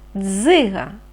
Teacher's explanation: ми чуємо звук ДЗ цей звук твердий приголосний тому ми позначаємо однією рисочкою Дзига м'який наступний звук так и